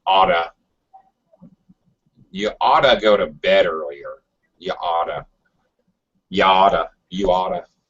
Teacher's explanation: American speakers do something with the T's. It's called a flat D or a fast D. So Americans, it sounds like a D.